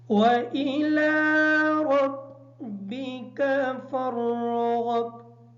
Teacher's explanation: وَإِلَى کی جو لام ہے اس لام کو تھوڑا سا لمبا کر کے پڑھیں گے، اس وجہ سے کہ اس کے اوپر کھڑی زبر ہے، اور اس حمزہ کا خیال رکھیں گے۔ · عموماً سننے میں آتا ہے کہ اس حمزہ کو مجہول پڑھ دیا جاتا ہے، اور ربک کی جو را ہے اس را کو پر پڑھیں گے، کاف کو باریک پڑھیں گے، اور فرغب کی جو را ہے اس را کو بھی پر کر کے پڑھیں گے